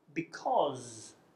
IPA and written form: bɪ’kɒz (because)